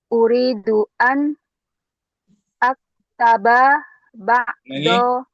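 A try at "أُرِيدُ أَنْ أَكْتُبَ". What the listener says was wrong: Betul, aktu, jangan akta.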